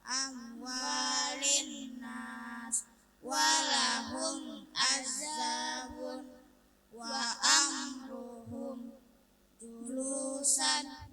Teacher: Mim sukun dengan jelas di bibir.